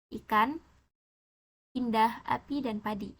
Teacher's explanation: vokal I kecil, vokal depan tinggi tak bundar